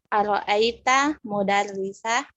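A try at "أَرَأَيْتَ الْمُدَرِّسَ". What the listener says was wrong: Ara'aital alif lam, jangan lupa baca.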